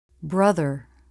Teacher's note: tongue tip through the teeth for the voiced th. Lips and tongue are relaxed.